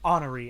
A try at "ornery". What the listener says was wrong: Ornery. Yeah, there you go. Because that would be an H, not an O. Ornery.